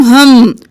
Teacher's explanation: تشدید ہے تو غنہ کریں گے